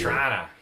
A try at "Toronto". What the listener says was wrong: If you're from Toronto, you don't say that last T. Then you're not from Toronto. See, anybody from Toronto cringes when they hear that.